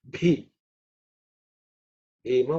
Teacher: is the fourth letter in the pa varga, so it has to be aspirated